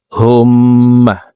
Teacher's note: হুম এখানে ওয়াজিব গুন্না, হরকতের বামে নুনে মিমে তাসদিদ হইলে সর্ব অবস্থায় নাকের বাসি থেকে গুন্নাহ করিয়া পড়িতে হয়। তো হুম্মা এভাবে পড়তে হবে।